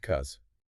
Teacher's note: It almost always reduces to cuz the initial B syllable disappears completely and the vowel in the cause part is often reduced rapidly to a schwah or something very close to it right before the final Z sound.